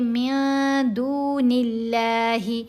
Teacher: جب اس لام سے پہلے والے حرف کے نیچے زیر آ جائے تو ہم نے اس لام کو باریک پڑھنا ہے۔ تو یہاں نون کے نیچے زیر ہے، اسی وجہ سے ہم باریک پڑھیں گے